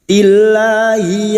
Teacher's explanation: lam jalalah didahului dengan kasrah, kita membaca tarqiq atau tipis